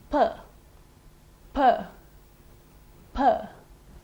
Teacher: You would notice little or no vibration of the vocal cords. That is a voiceless sound.